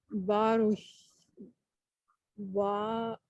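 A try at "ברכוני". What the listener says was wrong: Oh, there's no sh at the end.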